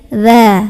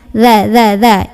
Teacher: Berikutnya huruf dzal. Kalau huruf dzal ini sama kayak sa, ujung lidah menyentuh ujung gigi seri yang atas. Gigi seri itu yang tengah.